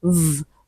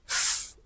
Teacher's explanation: this sound is a voiced sound. We have the voiceless counterpart which is f. Okay. So there's a vibration in the larynx.